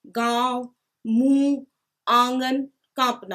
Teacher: अनुनासिक जो है, इसमें इसका उच्चारण मुंह और नाक से होता है, और इन स्वरों पर चंद्र बिंदु लगाया जाता है। इसमें जब उच्चारण करते हैं तो नाक और मुंह से सांस आती है और इसलिए इनका उच्चारण स्थान हो जाता है नाक और मुंह।